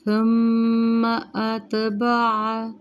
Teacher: میم مشدد پہ غنہ کریں گے